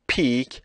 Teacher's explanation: you hear again a puff of air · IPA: [pʰik]